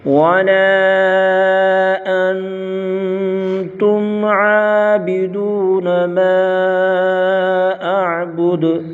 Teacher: ما پر مد منفصل، 2 ڈھائی 4 الف تک کھینچ کر پڑھیں گے۔ اعبد دال پر قلقلہ کریں گے